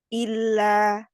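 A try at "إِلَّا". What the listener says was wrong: Ya, jangan terlalu ditekan. Illa biasanya.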